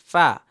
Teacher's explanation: নিচের ঠোঁটের পেট সামনে উপরের দুই দাঁতের আগার সঙ্গে লাগিয়ে উচ্চারিত হয় ফা নিচের ঠোঁটের পেট সামনে উপরে দুই দাঁতের আগার সঙ্গে লাগিয়ে · তাহলে আরেকবার পড়ে নেই, ১৪ নম্বর মাখরাজ, নিচের ঠোঁটের পেট সামনে উপরের দুই দাঁতের আগার সঙ্গে লাগিয়ে উচ্চারিত হয় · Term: 14 নম্বর মাখরাজ